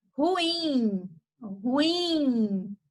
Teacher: Ruim, ruim. Perceba que você fala o in com mais intensidade. Você fala ela mais forte. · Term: oxítona